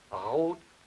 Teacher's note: I'm not very good at that, but that is a velar trill